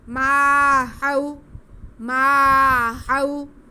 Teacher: ما، منہ کو کھول کے بولیں گے، منہ بند کر کے بولیں گے تو میم کی آواز ناک میں چل جائے گی، ناک میں نہیں جانی چاہیے. آگے واو ساکن سے پہلے ہا پہ زبر ہے، واو لین ہے، اس کو بالکل بھی نہیں کھینچنا